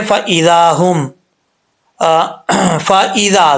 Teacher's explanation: ذال کو پڑھتے وقت سیٹی نہیں آنی چاہیے، بغیر سیٹی کے ذال پڑھا جاتا ہے اور نارمل طریقے سے پڑھا جاتا ہے، سختی سے نہیں پڑھا جاتا.